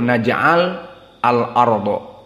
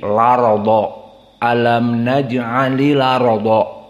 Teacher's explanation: maka hamzah pada al-ardo dihilangkan. Lalu harokat fathahnya al-ardo dipindahkan kepada huruf sebelumnya yakni lam. Jadi lardo. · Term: naql